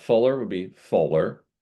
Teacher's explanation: If we have the L being followed by a vowel, I believe the L is going to want to make an appearance to bridge the gap.